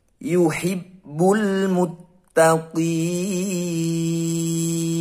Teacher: bertemu huruf hidup yaitu Naff dan dibaca waqaf atau berhenti maka ini adalah bacaan Mad Arid lissukun cara membacanya yaitu dibaca panjang 5-6 · ada Alif Lam Qomariah yang bertandakan sukun maka kita harus membacanya dengan jelas